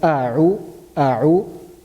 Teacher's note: first we are pronouncing from the bottom of the throat, which is hamza, then we are moving to the middle of the throat, which is ayn